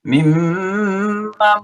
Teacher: mimman sama suaranya karena nun ketemu dengan mim ya, namanya idgham bigunna ya